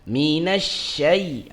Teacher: secara makhraj di mana di wasatul lisan ya. Dan dia secara sifat dia adalah sifat tafasyishi, dia meluas.